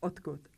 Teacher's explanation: There's no d sound in the word odkud. Even though we spell it with d, we pronounce t.